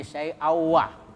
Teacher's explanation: tanwin ketemu waw, nah, itu idgham bigunnah, ya, dimasukkan kemudian berdengung, jadi tanwinnya dimasukkan ke waw, syai'aw, ya, syai'awah.